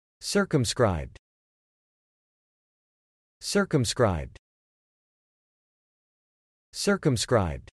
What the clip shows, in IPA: sɹ̩kəmskɹajbd